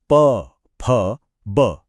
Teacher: यह ध्वनियां तब बनती हैं जब दोनों होंठ एक दूसरे को छूते हैं और फिर हवा के दबाव से खुल जाते हैं